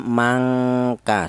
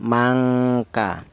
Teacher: Jadi tingkat ikfaknya atau tingkat kesamarannya rendah dibanding dengungnya. Jadi yaitu ee dengung lebih dominan daripada samarnya. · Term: ifa adna